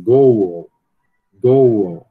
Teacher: Você vai pronunciar esse l final como se fosse um u, né? que é muito comum no português brasileiro. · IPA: goʊl